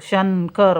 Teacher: शंकर म्हणतेवेळेस न चा उच्चार होतो